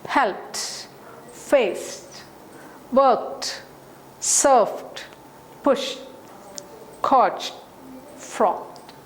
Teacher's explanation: these are all voiceless sound. P, s, k, f, sh, ch, and t.